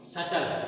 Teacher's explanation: जैसे अगर हम लिखें सटल, यहाँ पर सटल में जो यल होता है वो है डार्क, क्योंकि it is not well pronounced